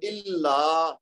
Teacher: اسی طرح جو الا, اب یہاں پہ ایک تو لام مشدد ہے تو اس کو زور دے کے پڑھیں گے, اس کے بعد الف مد آ رہی ہے آخر میں تو اس کی 2 حرکت بھی دینی ہے